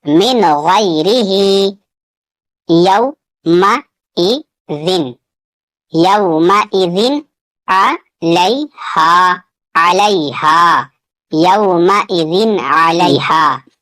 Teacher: یہاں پہ تنوین کا اظہار ہوگا، یعنی نون ساکن کی آواز کو ظاہر کر کے پڑھنا ہے